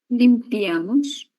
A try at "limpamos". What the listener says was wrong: Nós limpamos. Ok, nós limpamos, certo? Vai ser um pouco diferente do espanhol. Não vai haver a letra I acá. Vai ser limpamos.